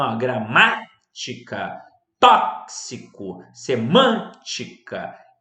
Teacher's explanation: Proparoxítonas. Nós temos a sílaba tônica na antepenúltima sílaba.